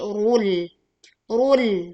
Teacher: Tekan lam sukun dengan lam yang tipis ya. Bukan rul, tetapi rul.